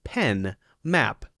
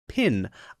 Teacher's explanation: a brief puff of air, as in pin